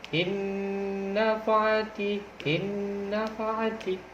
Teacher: Yang kedua contohnya ialah innafa'ati, innafa'ati, tanpa didengung, yaitu cuma langsung dimasukkan dengan huruf yang kedua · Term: idgham bila gunah